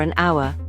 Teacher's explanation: Notice that the h in hour is silent. So, it starts with a vowel sound.